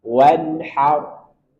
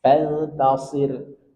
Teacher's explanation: ada ra sebelumnya fathah, maka dia dibaca tafkhim tebal. Wanhar. Kemudian fantasir, sebelumnya kasrah maka ra-nya ditipiskan.